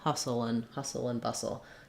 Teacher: we drop the vowel and the D sound in the and